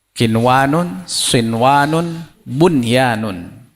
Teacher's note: bunyi n jelas dan tidak dengung